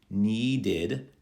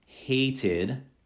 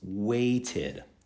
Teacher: it sounds a little like we're saying id at the end of the word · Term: id sound